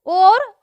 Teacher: ओ और औ का उच्चारण स्थान कंठ और ओष्ठ है। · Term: कंठोष्ठम